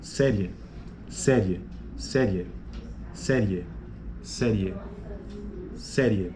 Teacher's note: Veja que é a vogal E que fica mais forte. Então você tem uma semivogal e uma vogal, e é crescente por conta de que essa semivogal está intensificando até chegar na vogal.